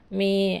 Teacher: కూడా పొట్టి లెటర్లు అంటే ఒక మాత్ర కాలంలో పలుకుతున్నాయి కాబట్టి రెండు లఘువులే మే అంటే గురువు రెండు మాత్రల కాలంలో పలుకుతుంది